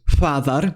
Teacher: The letter <f> is pronounced as the bilabial voiceless fricative [ɸ]